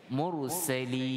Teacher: Baik, jadi untuk waqaf di sini, kalimah mursalin ra dibaca tebal, mursalin dengan ra dibaca tafkhim